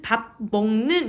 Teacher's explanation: 밥이라는 종성 비읍을 뒤에 오는 단어인 먹이라는 초성 미음 때문에 영향을 받아서 미음, 비음으로 소리를 바꾸고 있는 현상을 확인할 수 있습니다. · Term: 비음화 현상